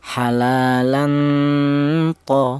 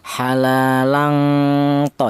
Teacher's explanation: Jadi ada dengungnya sedikit. Jadi ee samarnya lebih dominan daripada dengungnya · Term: ifa a'la, ikhfa a'la